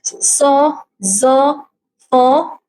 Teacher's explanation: the continuous squeezing of air through a highly narrowed vocal tract creating a audible friction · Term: fricative